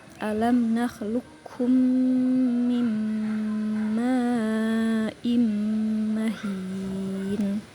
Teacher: Qof bertemu kaf dihilangkan sifat qalqalahnya. · Qaf bertemu kaf, dihilangkan sifat qalqalahnya, idgham mutaqaribain. Jadi dibaca, qafnya dimasukkan ke kaf, diidghamkan.